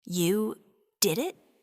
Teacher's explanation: Rising tone, confusion or surprise.